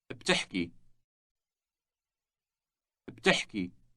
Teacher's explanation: The word has two consecutive consonants at the beginning, B and T.